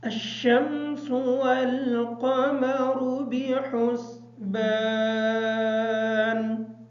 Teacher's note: والقمر کی جو قاف ہے اس قاف کو موٹا پڑھیں گے، را کے اوپر پیش ہونے کی وجہ سے اس را کو پر کر کے پڑھیں گے۔ · بحسبان کی جو ہا ہے اس ہا کو باریک پڑھیں گے۔